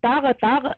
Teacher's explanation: कलकला नहीं करेंगे, ताग पॉज कर देंगे आवाज को हलक में